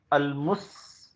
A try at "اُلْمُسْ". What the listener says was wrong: المس نہیں المس پیش.